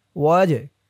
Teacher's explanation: জিমটা কলকলার হরফ ধাক্কা দিয়ে পড়তে হবে